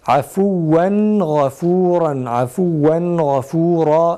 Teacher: tenvindeki nunu açıkça okuyoruz, gizlemiyoruz ve idgam da yapmıyoruz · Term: izhar